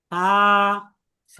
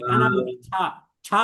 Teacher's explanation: তা, আর এই সা হরফটা তা, সঠিকভাবে আপনি তখনই উচ্চারণ করতে তা, পারবেন যখন এই চিহ্ন অনুযায়ী মুখের শেপ মিলবে, অর্থাৎ জিহ্বার আগা এবং উপরের দাঁতের আগা, এই দুই আগা স্পর্শ করবে,